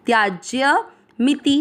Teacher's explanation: सिर्फ उसमें अनुस्वार था यहां पर अनुस्वार नहीं है त्याज्य मिति दोनों मात्रा छोटी लंबा नहीं खींच